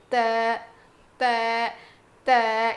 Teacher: زبان کی نوک کو سامنے کے دو دانتوں کے جڑ میں لگانے سے ادا ہوتا ہے